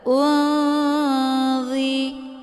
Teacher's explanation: dengan huruf D ini kan dengan Ikhfa ausat cara bacanya nunnya disamarkan kemudian siap-siap menuju ke huruf dza unzi ya hukum bacaan ikhfa ausad dibacanya juga sambil didengungkan kemudian